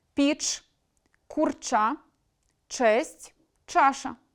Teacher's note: Шиплячі в кінці слова і складу завжди вимовляють твердо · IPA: [п’іч], [курча], [чес’т’], [чаша]